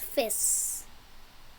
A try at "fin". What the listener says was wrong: Oh, you said fish about this one. Okay, but there is an N here, right? So this should make the sound fin.